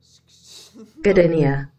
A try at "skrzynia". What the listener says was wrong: You were saying it right, but you weren't saying it fast enough together. Szkzenia. Szkzenia.